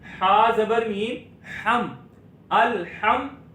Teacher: तो यहां पर मीम साकिन में हम अब गुन्ना नहीं करेंगे